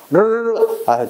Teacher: 그래서 여러분들 호루라기 있죠, 호루라기처럼 입안에서 공기가 아주 빨리 나오다 보니까 이 혀가 회전되면 내는 소리야. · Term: 혀 구르는 소리